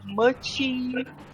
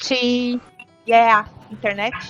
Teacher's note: we have this tendency to add an extra e sound at the end of the syllables